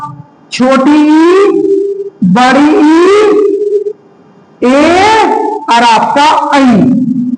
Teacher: जो स्वर जीभ के अगले हिस्से से उच्चारित किए जाते हैं वह अग्र स्वर कहलाते हैं